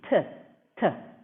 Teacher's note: The T in Shanti, here it is pronounced like English. The tongue is touching the back of the teeth.